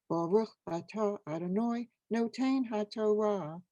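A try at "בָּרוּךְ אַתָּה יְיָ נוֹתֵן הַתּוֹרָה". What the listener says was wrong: Yasher Koach. Wonderful.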